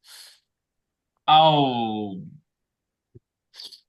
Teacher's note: dalam setiap keadaan dia tebal ketika fathah kasrah dah sukun dia tebal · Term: istilla